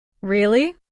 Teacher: Say, "Really?" Try that with a rising tone like you're surprised.